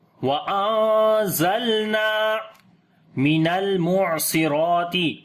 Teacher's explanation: لام کے اوپر صفت توسط کریں گے، نون کو لمبا کریں گے ، الف مدہ ہے۔ وَأَنزَلْنَا مِنَ الْمُعْصِرَاتِ لام کے اوپر صفت